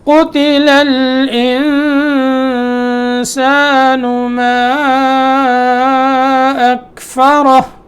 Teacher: قتل الانسان، الانسان پہ اخفا، ٹھیک ہے